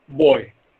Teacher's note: the glide begins at the back rounded position between half open and open. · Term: Oi